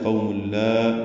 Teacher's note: میم کو لام سے ملا دیں گے، ادغام کامل ہے